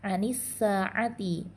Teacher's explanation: alif lam bertemu dengan huruf sin, lamnya dimasukkan secara sempurna ke dalam huruf sin, maka hukumnya adalah idgham syamsi atau alif lam syamsiyah.